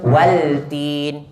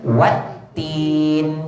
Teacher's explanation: Kenapa lam tu baca macam tu? Lam tu di ulama andaikan gabung dengan ta. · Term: idgham